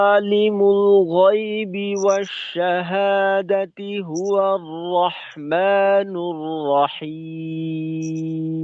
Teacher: র গুলিকে আরেকটু মোটা করে ধরা